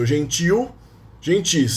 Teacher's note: Notice that gentil is accented. The stressed syllable is the last one. The stress, it is stressed in the end.